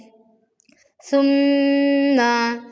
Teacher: ثم، سا نرمی سے پڑھیں گے، زبان کے نوک کو ثنایا علیہ کے کناروں پر لگانے سے سا کی ادائیگی ہوتی ہے، اس میں سیٹی والی آواز نہیں پیدا کریں گے۔ ثم میں ثم اس طرح سے نہیں پڑھیں گے۔